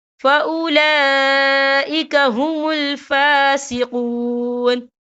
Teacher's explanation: وَمَن لَّمْ يَحْكُم بِمَا أَنزَلَ اللَّهُ فَأُولَٰئِكَ هُمُ الْفَاسِقُونَ، یہ دیکھیں فَأُولَا، لام کے پر کھڑی حرکات ہے اور اس پر مد بھی ہے، یہ مد جو ہے مد متصل ہے، اس کی مقدار 4 حرکت کے برابر ہے، تو ہم اسے 4 حرکت کے برابر کھینچ کے پڑھیں گے۔